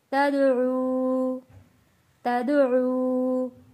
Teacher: دال حروف قلقلہ ہے، یہاں پہ قلقلہ ادا کیا ہے۔ واو ساکن ہے، واو ساکن سے پہلے پیش ہے، حروف مدہ ہے، ایک الف کے برابر کھینچ کر پڑھیں گے۔